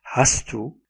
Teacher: the z for has devoices due to the influence of the following t. Assimilation patterns.